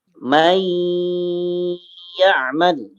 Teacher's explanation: Memasukkan dengan gunnah, dengan dengung. Ya, dengan dengung. Gunnah itu dengung. Dan ditahan selama 2 harokat. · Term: idgham bigunnah